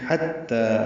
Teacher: حا وسط حلق سے ادا ہوگا، تا سے ملائیں گے، تا کھڑا زبر 2 حرکات لمبا ہے